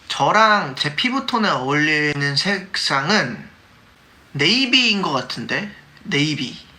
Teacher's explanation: Each part of his sentences starts by going up and then back down